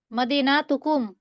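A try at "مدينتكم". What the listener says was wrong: মদিনা, না টান হবে না। মদিনাতুন থেকে মানে শব্দগুলি যেরকম থাকবে ওরকম, ওটার মধ্যে টান টান দেওয়া যাবে না।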